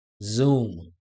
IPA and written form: zuːm (Zoom)